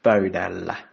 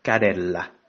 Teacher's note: So you use the suffix with a front vowel, which is la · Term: front harmony